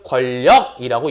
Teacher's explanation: 니은과 리을이 만났으니까 니은이 뭐로 바뀌어? 리을로 바뀌고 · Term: 유음화